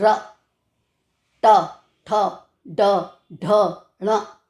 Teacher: पीछे की जो हमारी टंग होती है पीछे की तरफ फोल्ड होती है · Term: मूर्धन्य